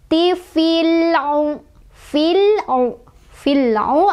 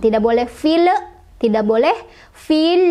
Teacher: Cara bacanya adalah alif lamnya dibaca jelas ya. Alif lam yang berharokat sukun dibaca dengan jelas. Tidak boleh memantul, tidak boleh ditahan. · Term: alif lam qomariah